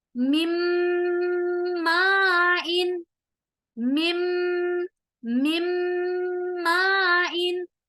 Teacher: دونوں ہونٹوں کو آپس میں ملا رہے ہیں اور اس آواز کو ناک میں لے جا رہے ہیں، غنہ بھی ہو رہا ہے